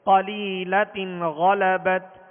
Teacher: غین حروف مستعلیہ میں سے ہے, بغیر ہونٹ گول کیے اسے پر پڑھیں گے